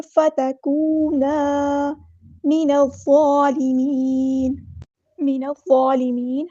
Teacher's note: ہم نے نون کو وا کے ساتھ ملا دینا ہے، حمزۃ الوصل ہمارا ڈراپ ہو جائے گا